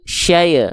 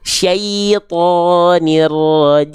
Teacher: I vokalnya syai, maka angkat tengah lidahnya. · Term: vokal I